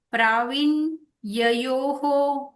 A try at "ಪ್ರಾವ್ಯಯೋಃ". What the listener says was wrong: ಯು are telling ಪ್ರವೀನ್ ಗ್ಯಯೋಹ I am asking ಯು not to take that